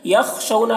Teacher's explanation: خاء کو پر پڑھنا ہے، حروف مستعلیہ میں سے